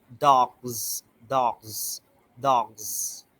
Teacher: Okay, for example, like dog, dog, okay, so it is the voiced sound. So the s endings need to be a voiced sound.